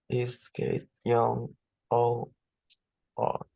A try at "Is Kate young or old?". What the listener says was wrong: I cannot hear the difference. It seems like you're reading it in flat tone.